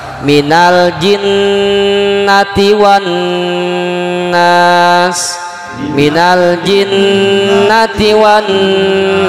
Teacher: Jadi dengungnya dua harakat dengungnya dua harokat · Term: gunnah musyadadah